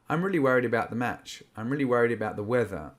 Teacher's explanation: Worried about. Okay, so the D is softened and the A is softened, and they form a transitionary sound